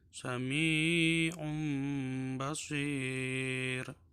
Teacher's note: Jadi bunyi tanwinnya berubah menjadi mim. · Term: iqlab